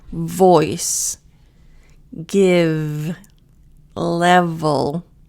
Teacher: V, it should vibrate. It should tickle your lip.